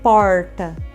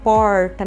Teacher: minha língua tá dobrando para trás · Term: R retroflexo